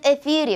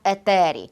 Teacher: Звісно що наші предки грецьку тету вимовляли як т